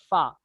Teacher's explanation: ऊपर वाले 2 दांतों का हिस्सा और नीचे के होठ का अंदरूनी हिस्सा इससे फा निकलता है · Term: शफविया